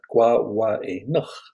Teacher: wah wah a nook as in having breakfast better nook and if you had a little bit of flair you can make it sound like you're clearing your throat a very glottal sound